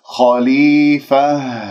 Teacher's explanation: كلمة خليفة الخاء مفخمة مرتبة ثانية لأنها مفتوحة، ولا أكور الشفاء أقول خ خليفة، خطأ، خ خليفة، ولما أقف هنا التاء المربوطة راح أقف بها وهذه الهاء باهتزاز الأوتار الصوتية من منطقة أقصى الحلق، فننتبه إليها حتى يجري فيها الصوت والنفس.